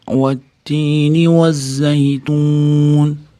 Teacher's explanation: Vav harfi lablar sar oldiga do'rdayibroq, cho'chchaytiribroq chiqariladi. Va bo'lib shunda to'g'ri chiqadi.